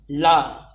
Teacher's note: ला पार्श्विक है, जिसके उच्चारण में हवा जीभ से बगल से निकलती है। एक बार गौर से ला बोल कर देखेंगे तो जीभ जो है राउंड हो जाती है और हवा जो है उसके साइड से निकलती है, ला।